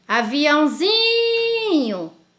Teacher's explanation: E na palavra aviãozinho, a sílaba tônica é o zi. Então, perceba que eu não posso tirar o til.